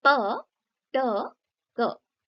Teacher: plosives, जिसमें एक छोटा सा बॉम्ब की आवाज आती है